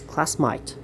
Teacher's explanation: instead of hearing the word a they pronounce it as i so instead of hearing today they say to die all right so they say classmate as class might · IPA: /æi/